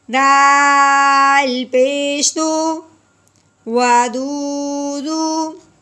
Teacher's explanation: واو ساکن سے پہلے پیش ہے اس لیے اس کو ایک الف کے برابر لمبا کریں گے